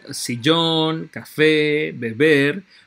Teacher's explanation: se acentúan de la última sílaba · Como pueden ver, todas se acentúan en la última sílaba, es decir, todas se les da mayor énfasis. La sílaba tónica, la sílaba con el mayor énfasis, está al final. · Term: agudas